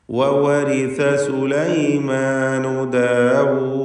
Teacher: ദാലിൽ വഖഫ് ചെയ്യുകയാണ്, സുക്കൂൻ വരുന്നു, ഖൽഖല കുബ്ര നൽകേണ്ടതുമാണ്. ഇനി വഖഫ് ചെയ്യാതെ ഓതുമ്പോൾ അങ്ങനെ ദീർഘം വരാതെ 2 ഹറക്കത്തിൻ്റെ അളവിലുള്ള സാമാന്യ ദീർഘം മാത്രം നൽകിക്കൊണ്ട് വവരിസ സുലൈമാനു ദാവൂദ വഖാൽ എന്ന് ഓതേണ്ടതാണ്.